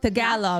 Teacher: The letter T in Tagalog is dull. Tagalog. Not sharp and airy like a T in English.